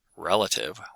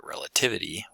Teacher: Relative with stress on the first syllable, but relativity with stress on the third syllable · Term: lexical stress